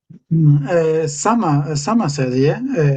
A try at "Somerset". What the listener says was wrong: Yeah, Somerset. Yeah, that's it.